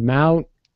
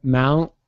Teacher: I'm going with the T, but I'm holding it. Mount. And then I go.